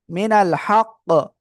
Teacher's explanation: মিনাল হক এখানে কি হয়ে যাবে, কলকলা করতে হবে শেষে।